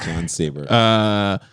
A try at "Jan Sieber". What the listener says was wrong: No H either. Jan Sieber.